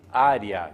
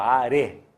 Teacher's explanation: O A não tem discussão, ele é sempre vogal. O E ficaria como semivogal, tanto é que a gente pronuncia como se fosse um I, área. Dificilmente alguém fala are, área.